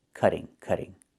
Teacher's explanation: in America, we change the T to a fast D when it's between vowels